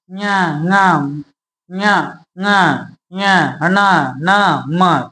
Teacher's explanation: इसका जब उच्चारण करेंगे तो नासिका से थोड़ा आवाज निकलती है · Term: नासिक्य व्यंजन